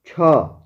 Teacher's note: छ तालू से उच्चारित होता है